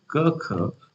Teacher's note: मुंह की छत का पिछला नरम हिस्सा। उदाहरण के लिए क ख बोलते समय जीभ का पिछला हिस्सा इसे छूता है